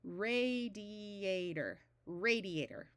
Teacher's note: After a vowel before a single consonant, between the I and the A, after the A before a single consonant, and OR at the end of longer words usually has a muffled sound rather than a clear OR sound